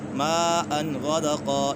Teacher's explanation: مَاءً غَدَقًا، یہاں پر مد متصل ہے، حرف مد کے بعد حمزہ اسی کلمے میں تو اسی وجہ سے مد متصل ہوگا۔ غَدَقًا، 2 زبر کو الف سے بدل دیں گے اور 1 زبر پڑھی جائے گی۔